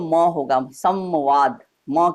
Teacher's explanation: ये अनुस्वार होगा लेकिन इसका उच्चारण हम करेंगे तो म होगा